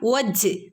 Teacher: ജീമിന് സുക്കൂന് വന്നാൽ കൽക്കലയുടെ ലെറ്ററാണ്, ഫുൾ സുക്കൂന് കൊടുക്കണം.